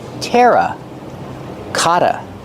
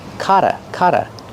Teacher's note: The double T makes a fast D.